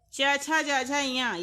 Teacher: ये निकलता है तालव्य से यानी कि तालु से